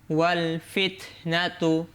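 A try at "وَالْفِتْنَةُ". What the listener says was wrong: মানে ওয়ালের মধ্যে খুব পজ হয়ে গেল, ওয়াল ফিতনাতু।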